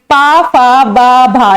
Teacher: इनका उच्चारण स्थान होता है हमारा ओष्ठ से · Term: औष्ठी व्यंजन